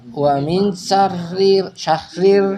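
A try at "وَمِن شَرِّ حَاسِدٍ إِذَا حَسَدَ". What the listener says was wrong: Bukan syahri tapi syarri. bukan syahri tapi syarri. Wa min syarriha. Wa min syarri hasidin idza hasad.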